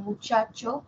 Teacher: la africada inicia como oclusiva cierra como fricativa termina como fricativa y es la palatal sorda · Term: africada palatal